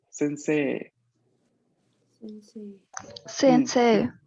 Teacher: cuando lo veamos así, EI, la gran mayoría de veces vamos a pronunciarlo una E larga. La I está ahí solo para indicarme de que la E va a ser larga.